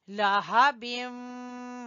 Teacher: ابھی، لہبم، ہا کو گلے کے آخری حصے سے نکالیں گے، لہبم و تب۔ یہاں پر ادغام ہو رہا ہے، نون تنوین کے بعد واو ہے، لہٰذا یہاں پر ادغام بالغنہ ہے۔